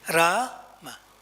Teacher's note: ra there's a diacritic mark you see in your mantra card so that first a is little long and louder